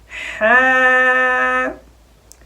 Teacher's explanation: ہا کا مخرج جو ہے، ہمارا حلق جو ہے، ہمارا گلا، اس کا بیچ والا حصہ ہے، یہاں سے ہا ادا ہوتی ہے۔ ٹھیک ہے، جب بھی ہا پڑھیں گلے کی طرف تھوڑا سا زور لگے، اور ایک بات یاد رکھنی ہے آپ نے کہ ہا کو ہمیشہ باریک پڑھا جاتا ہے، موٹا نہ ہو جائے، یوں نہ ہو جائے ہا ہا، یوں نہ ہو جائے۔